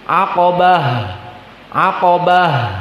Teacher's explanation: ta almarbutah di sini dibaca dengan makhraj ha